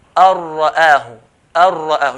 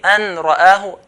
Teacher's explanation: The nun sakin will merge straight to the ra without any ghunna. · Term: merging with ra and lam